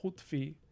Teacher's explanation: Hutfi, the u here is going to be rounded, and I'm even dropping that u down a little bit to closer to o